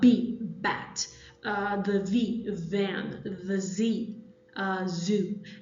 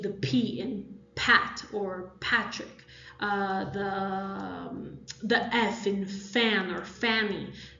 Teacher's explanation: when you pronounce these, you actually feel a vibration that goes through your throat. So it's like a buzzing feeling. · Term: voiced